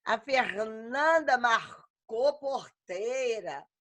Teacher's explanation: E no interior, falam um R todo enrolado.